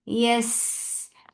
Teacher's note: You're not pressing hard on seen when you're attaching ya with seen. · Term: rakhawa